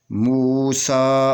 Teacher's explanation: یہ سین کو 2 حرکت کے برابر کھینچ کر پڑھیں گے، یہ کھڑی زبر ہے اس لیے۔